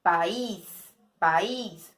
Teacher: A última sílaba que é a tônica. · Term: sílaba tônica